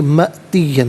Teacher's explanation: حمزہ ساکن ہے جھٹکے کے ساتھ پڑھیں گے